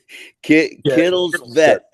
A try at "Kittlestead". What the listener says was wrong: The V's silent. Kittlestead.